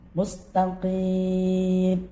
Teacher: Mustaqim atau mat alif disukun hukumnya boleh panjang 2, 4 atau 6 harokat.